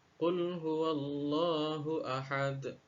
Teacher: Huruf dal yang disukunkan ini berada di akhir dari lafaz atau di akhir ayat, sehingga pantulannya lebih besar daripada qalqalah sughra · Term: qalqalah kubra